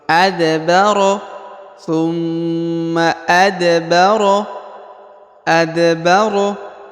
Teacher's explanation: huruf da berharakat sukun maka dia dibaca pantul · Huruf Da berharokat sukun, maka dia dibaca pantul. Karena huruf Da yang berharokat sukun adalah salah satu daripada huruf-huruf qalqalah atau huruf pantul, maka dibaca pantul.